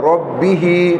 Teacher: را پر زبر موٹا ہوگا